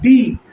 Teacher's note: जैसे ही बोलते हैं डी तो क्या होता है कि जीभ तालू से टकराती है और वाइब्रेशन पैदा होता है और इस वाइब्रेशन से जो साउंड निकलता है वह डी है।